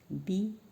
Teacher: अब बी बोलोगे तो हमारे दोनों लिप्स आपस में टकराते हैं